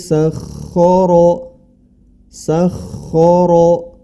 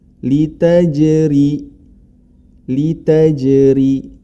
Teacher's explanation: Perbedaannya sangat kontras ro tebal dan ro tipis